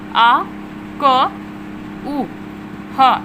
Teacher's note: अकु हा विसर्ग नियन मतलब आ क उ ह, यानी आवर्ण और का वर्ग के सभी वर्ण, उसी के साथ साथ हा जो है और विसर्ग जो है हमारा वो सभी कंठ से उच्चारित होते हैं